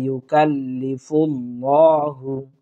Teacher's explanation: লামে খাড়া জবরটা আমরা পুর করব, অর্থাৎ ল পড়ার চেষ্টা করব